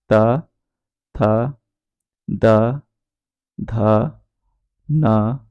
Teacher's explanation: दंत वर्ण वो वो वर्ण होते हैं जिनके उच्चारण में जो जीभ है वो दांतों पर लगती है